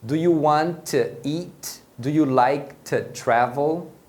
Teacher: Normalmente dentro de uma frase, o to vai ter a pronúncia dele reduzida. Então normalmente você vai escutar como se fosse um t.